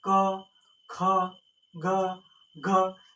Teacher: ये पूरा वर्ग जो क वर्ग है वो आपसे कंठ से बोला जाएगा।